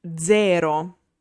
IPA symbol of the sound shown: dz